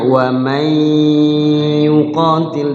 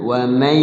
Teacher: Idgham bi gunnah yaitu memasukkan nun ke ya. Idgham artinya memasukkan, bi gunnah dengan menggunnahkan di huruf gunnahnya itu.